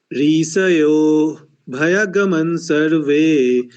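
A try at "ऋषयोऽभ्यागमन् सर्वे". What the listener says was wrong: हाँ, ऋषयोभ्यागमन सर्वे, ये दीर्घ है देखिए.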